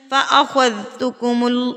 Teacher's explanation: خو پر پڑھا جائے گا، مطلب اس کو تھوڑا سا منہ کو آپ گول کریں گے نا تو خو پر ادا ہوگا